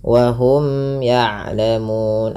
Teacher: Wa hum ya'lamun, ada mim mat yang bertemu ya. Di sini pada dasarnya ada hukum tajwid berupa izhar syafawi, dibaca dengan jelas mimnya. Kemudian pada lafal ya'lamun, mun, panjangkan ya 2 harokat, 4 atau 6 harokat, yang dimana kita boleh memilih karena di sini ada namanya mad arid lisukun.